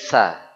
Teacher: huruf tsa intinya mengucapkan es tapi lidahnya naik naik ke atas ya kalau bisa naiknya ke gigi seri